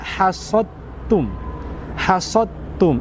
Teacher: Ada huruf dal mati bertemu dengan huruf ta, maka kita lantas leburkan secara kamil atau sempurna ke huruf ta, sehingga kita baca hasad tum, hasad tum.